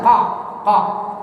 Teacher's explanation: Ko itu di pangkal lisan